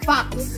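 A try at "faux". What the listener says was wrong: F-O. F-O ang pag-pronounce fo. Silent.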